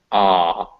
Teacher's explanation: ah, all the way in the back of your throat.